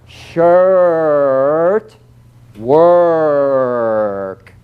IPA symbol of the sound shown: ɜː